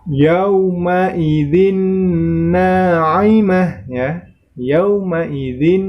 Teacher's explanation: terdapat tanwin bertemu dengan huruf nun maka itu termasuk hukum bacaan Idgham Bighunnah sama seperti sebelumnya maka cara membacanya dengan mendengung